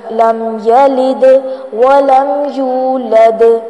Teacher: د last میں جو دال ساکن ہے اس کو ہلائیں گے، اس کو کہتے ہیں قلقلہ کرنا